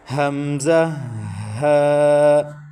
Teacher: حروف حلق کی 6 ہیں اور حلق کے 3 حصے ہیں، ایک بالکل لاسٹ والا جو سینے کے متصل ہے، اور ایک درمیان والا، اور ایک شروع والا جو منہ کے متصل ہے۔ تو یہ 2 حروف حلق کے آخری حصے سے ادا ہوتے ہیں جو سینے کے متصل ہے۔ · एक बिल्कुल लास्ट वाला जो सीने के मुत्तसिल है और एक दरमियान वाला और एक शुरू वाला जो मुंह के मुत्तसिल है। तो ये दो हुरूफ हलक के आखिरी हिस्से से अदा होते हैं।